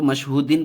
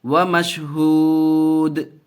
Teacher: ومشہود قلقلہ بھی ہوگا اور وقف کرتے وقت ساکن بھی کریں گے، لیکن حرکت کی آواز نہیں آئے گی، صرف دال کی آواز آئے گی